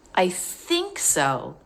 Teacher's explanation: when we hold out the word think like that, it's a way of showing we're not sure.